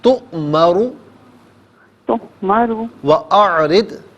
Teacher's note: تؤمرو میں را کو کھینچیے مت، را پر واو مدہ نہیں ہے نا، صرف پیش ہے